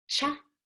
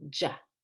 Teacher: Remember, you press more firmly for the CH than for the J.